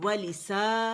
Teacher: مد اصلی ہے اور آواز 2 کاؤنٹ کے لیے اوپر جائے گی